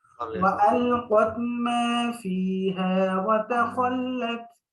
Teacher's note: এখানে মাতে টান আছে হ্যাঁ আর তাতে টান নাই